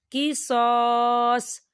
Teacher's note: وقف کی صورت میں صاد جو ہے وہ ساکن ہو جائے گا